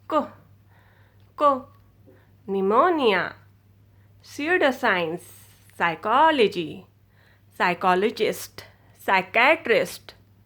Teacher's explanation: am, i pronouncing the P in this? No, i do not pronounce the P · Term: silent letter